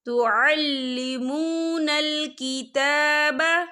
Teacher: تا کے پر کھڑی حرکات ہے تو ہم اسے 2 یا 3 حرکت کے برابر کھینچ کے پڑھیں گے